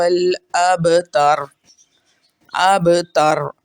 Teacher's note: را کو ساکن کیا، اس سے پیچھے دیکھا زبر ہے اس لیے اس کو موٹا اور پر پڑھا۔